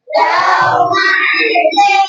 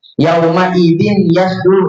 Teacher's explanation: Jadi tanwinnya itu enggak dibaca, namanya idgham.